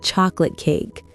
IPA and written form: ˈtʃɑːklət keɪk (chocolate cake)